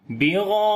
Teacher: اور الف کے اوپر مد ہے جو کہ بڑی مد ہے، مد متصل کریں گے جس کو مد واجب بھی بولتے ہیں، 3 سے 4 الف کے برابر لمبا کریں گے